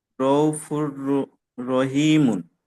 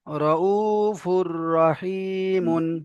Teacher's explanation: তানবিনকে রয়ের সাথে মিলিয়ে বিনা গুণা জাহির করে মিলিয়ে পড়তে হবে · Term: ঈদগামে তাম